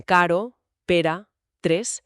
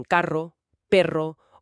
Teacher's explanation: Tenemos la vibrante simple, r, que es un solo golpecito rápido, como en caro, pera, tres, y luego la vibrante múltiple, r, que son varios golpes seguidos